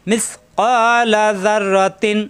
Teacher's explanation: আইনের সাথে, ইয় কন্ট্রোলতে সব দিয়ে, ইয়ামাল মিস, মিস নরম করে, মিস ক জিব্বার গোড়া থেকে